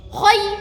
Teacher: Nah, kho mencucu nggih. Khay. Nah, ini juga dengung, 1 masuk, 2 dengung, yang keempat ini keluar.